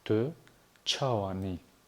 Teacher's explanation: Обращаем ваше внимание, что звук «ч» здесь взрывной.